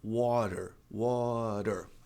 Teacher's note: Como o T está ladeado por vogais e a sílaba não é tônica, você pode transformar o T em re.